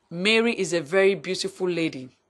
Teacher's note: lady, the last stressed syllable in the group, will be assigned the nuclear stress, which is the most prominent stress, while Mary and beautiful will be assigned tertiary stress, a prominence that is not as outstanding as that of lady. · Mary, beautiful, and lady will be assigned stress, while is and a will be left unstressed